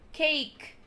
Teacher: Então, se vocês repararem, cake, por exemplo, é como se a palavra encerrasse no K, é como se o E sequer estivesse lá. Então, vocês vão falar cake, não cake, não like, like, alright?